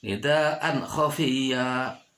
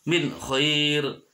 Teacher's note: wajib dibaca idhar. Harus jelas, tidak boleh berdengung.